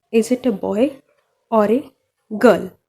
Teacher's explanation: बॉय पे हमारा थोड़ा वॉइस ऊपर हो जा रहा है, देन फिर गर्ल पे हमारा थोड़ा वॉइस ऊपर हो जा रहा है।